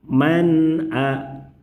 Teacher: Apabila menemukan nun sukun, nun mati, nun sakinah bertemu huruf haqqi, maka cara membacanya adalah huruf nun. Huruf nun sukun dibaca dengan jelas. tanpa dibaca panjang tidak perlu ditahan lama cukup dibaca jelas baru pindah ke pembacaan huruf haqqi.